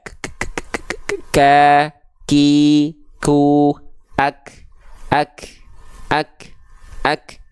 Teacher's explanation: Karena memang nafas dari huruf kaf itu kadarnya hanya berupa percikan saja. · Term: sifat hams